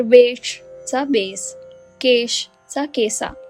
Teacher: संस्कृत मधील तालव्य श आणि मूर्धन्य श हे दोन्ही कठीण ध्वनी अवधीत येऊन अगदी मऊ आणि सोपे होऊन दंत्य स मध्ये बदलतात